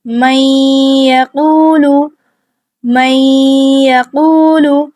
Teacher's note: تو ہم یا کا مخرج استعمال کریں گے، نون کو ہم پھر واضح نہیں کریں گے۔ میں غنہ کی مقدار 2 حرکات تک ہی رکھیں گے۔